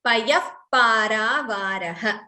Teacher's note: Visarga followed by pa, what we call upadhmaniya. So there is expulsion of air and we close the lips.